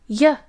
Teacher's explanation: is written using the English letter J in IPA it is palatal meaning the middle of the tongue is raised to meet the hard palate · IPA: j